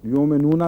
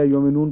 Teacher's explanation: یومنون ہے لفظ، لیکن نون یومنونا تھا، اس کی وجہ یومنون پڑھا. چونکہ نون ساکن ہو گیا اس لیے واو کو مدہ ہو یا نہ ہو لمبا پڑھنا پڑے گا